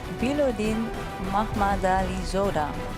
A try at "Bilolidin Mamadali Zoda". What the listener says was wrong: You jumped one syllable. Bilolidin.